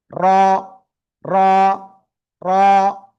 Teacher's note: জিহ্বার আগার পিঠ তার বরাবর উপরে তালুর সাথে একবার বা দুইবার এরকম লেগে উচ্চারণ করতে হবে। র র, মোটা আওয়াজে একালিপ টেনে উচ্চারণ করব